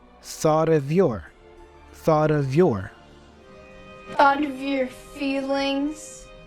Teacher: And that vowel for of is a schwa sound, So we say thought'a. And then we continue by pronouncing the F as a V, of your.